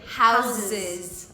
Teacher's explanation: E até o substantivo house, no plural, vira com Z.